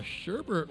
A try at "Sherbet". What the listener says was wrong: It's not Sherbert. It's Sherbet. Yeah, there's no R. Sherbet. Always been Sherbet.